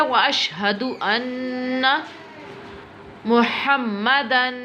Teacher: ان غنہ ہوگا کیونکہ تشدید ہے اس کے اوپر.